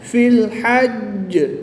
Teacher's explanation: وقف کی حالت میں جیم مشدد کی زیر کو ساکن کر دیں گے اور تشدید کو باقی رکھیں گے، اور جب تشدید کو باقی رکھیں گے تو ان پہ قلقلہ خوب جماؤں کے ساتھ کریں گے۔